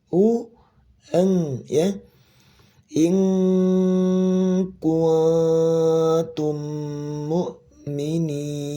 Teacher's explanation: Masih ingat ya gimana posisi rahang ketika ngucapin ikhfa sebelumnya domah ya. Maka domahnya sempurnakan dulu manyun u baru eng